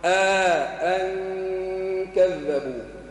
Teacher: نجيب إخفاء النون مع الغنة